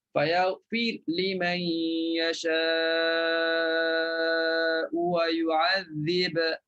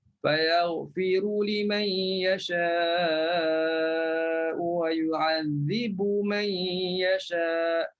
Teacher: Fayaghfir Wa yu'adzib, matikan huruf ra, matikan huruf ba. Bila matikan ba, maka di sini bagi bacaan Warash, dia kena baca dengan izhar. Kena bunyi qalqalah.